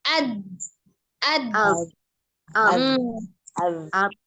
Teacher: huruf dad ada dua tepi lidahnya ya, sisi lidahnya ini bertemu dengan gigi geraham atas